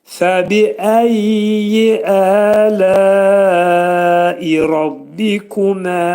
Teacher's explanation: Burada fəbi-əyyi dedikdə fə demək incə samit, fənin məxrəci üst dişlə alt dodağın arasında olacaq incə şəkildə, bi incə şəkildə.